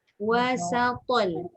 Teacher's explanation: Sin nipis, to tebal.